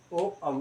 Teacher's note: कंठोष्ठ से बोले जाएंगे आपके ओ और औ